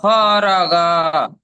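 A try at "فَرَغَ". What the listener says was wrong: হয়নি, একদম হয়নি। ফারগ। হয়নি হয়নি, ফায় টান হবে না, গয়নে টান হবে না, শুধু রয় টান হবে।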